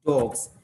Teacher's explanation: s එක පුතේ ඇත්තටම අපි ශබ්ද කරන්න ඕනේ pronounce කරන්න ඕනේ s විදියට නෙමෙයි z විදියට